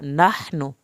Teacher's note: नून की पेश को लंबा नहीं करना · हा को हल्क से पढ़ा